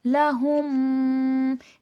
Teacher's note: میم مشدد کا غنہ ہوگا۔ قرآن مجید میں جب بھی میم پر تشدید آتا ہے اور نون پر تشدید آتا ہے، سب سے زیادہ اکمل مکمل ترین غنہ ہوتا ہے۔